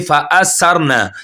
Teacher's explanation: سین کی ساؤنڈ نہیں آنی چاہیے, ثا کی آواز آئے. ثَرْنَ اوپر والے دانتوں کے ساتھ زبان کا کنارہ لگے گا, اوپر والے دانتوں کے کناروں کے ساتھ, تو یہ نکلے گا ثا.